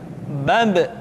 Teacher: Ketika mati, maka terdengar suara pantulan.